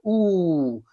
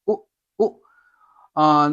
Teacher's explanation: It's not like ooh, it's like ooh, ooh. The sound comes out more from the back of the tongue. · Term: u sound